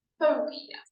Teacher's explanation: Sounds great, but I think you probably want to say school phobia. That's a 3-syllable word with the stress on the 1st syllable.